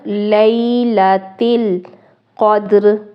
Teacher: قاف موٹا کر کے پڑھنا ہے، موٹے حروف میں سے ہے